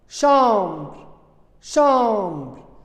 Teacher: j'ai fermé les lèvres quand j'ai prononcé B.